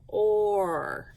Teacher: when I go back up to the or sound, I can kind of hear the long O sound